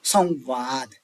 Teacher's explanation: ओष्ठ व का उच्चारण स्थान दंत ओष्ठ होता है।